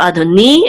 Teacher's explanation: the accent again is over the nun, which means it's on the last syllable